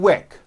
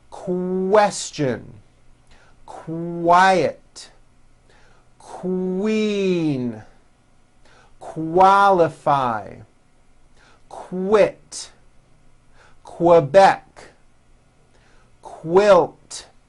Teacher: the word quick is pronounced with a k and a strong W sound KO quick like that repeat some of these words beginning with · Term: Q sounds